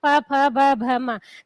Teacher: क्योंकि इनको बोलते समय हमारे जो होठ हैं वो आपस में मिलते हैं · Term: ओष्ठ वर्ण